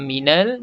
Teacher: Izhar qamari. Jelas dan terang kita sebut lam mati ni